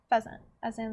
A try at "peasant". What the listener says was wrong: Isn't that peasant? peasant. It's peasant. pheasant would have an H in front of the P, or after the P, to be a pheasant.